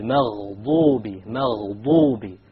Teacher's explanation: the dad, remember, it comes from one entire edge of the tongue along with the molars.